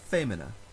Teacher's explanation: the second to last syllable has a short vowel short i followed by only one consonant so the stress moves forward to the previous syllable